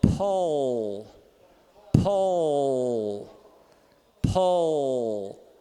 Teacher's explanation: eu vou fazer um L normal e vou subindo o dorso da língua sem tirar a ponta da língua · E não é faringalizado, não é a raiz, é o dorso. · É nem ball, é ball. Então é esse L velarizado